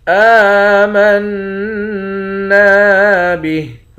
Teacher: نون مشدد پر غنہ کریں گے، نون کے بعد الف ہے، اس الف کو بھی ایک الف کی مقدار کھینچیں گے، آخر میں ہاں ساکن ہے۔ · حمزہ پر کھڑا زبر ہے، ایک الف کی مقدار کھینچ کر پڑھتے ہیں۔